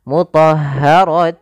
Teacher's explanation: cara membacanya masukkan tanwinnya ke wau · Akan tetapi bila kita lanjut, maka ya kita masukkan kembali dalam bacaan hukum idgham bi gunnah karena ada dhammatain bertemu dengan waw, yang mana waw termasuk daripada huruf idgham bi gunnah. Cara membacanya masukkan tanwinnya ke waw. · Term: idgham bighunah